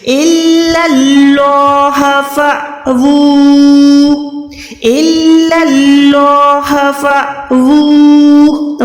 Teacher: واو الٹا پیش وو ہے، اس کے اوپر مد ہے، یعنی 2 سیکنڈ کھینچ کے لمبا کر کے پڑھیں